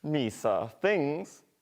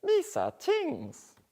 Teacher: they use the plosive counterparts t and d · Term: TH stopping